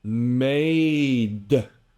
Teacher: That's not an A. It's just a release on the D that adds emphasis, more punch to the sound, which you don't have in Vietnamese.